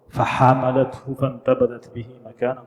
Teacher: It's not, the ha comes from here. The ha comes from the middle part of the throat.